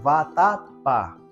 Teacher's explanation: A sílaba tônica é o pá.